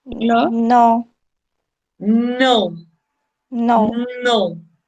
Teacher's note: voice, alveolar, and nasal